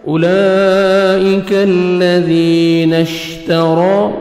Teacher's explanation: را کو آپ نے موٹا کر کے پڑھنا ہے